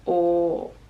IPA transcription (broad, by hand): ɔ: